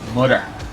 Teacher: you don't hear a t there's no T sound